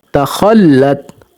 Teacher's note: अब खा जो है ये मोटा हरफ है, इसको मोटा करेंगे, तखल्लत। और ता जो है वो अपने पिछले हरफ शद वाले हरफ से मिल रहा है।